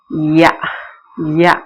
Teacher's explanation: நாவின் அடி மேல்வாயாகிய அன்னத்தின் அடியை பொருந்தும் நாவினோட அடி யா யா அடின்னா இங்க சிறுநாக்கு சின்ன நாக்கு இருக்குன்னு சொல்லுவோம்ல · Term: யகரம்